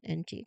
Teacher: It's made by the back of your tongue touching the roof of your mouth and the sound comes out through your nose.